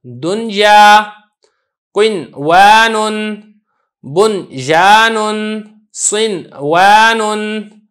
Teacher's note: ان میں ادغام نہیں ہو رہا ہے، اظہار ہو رہا ہے